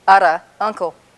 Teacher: This isn't ara like an English R. This is like a Spanish R, again, or R in some other languages as well. It's called a flap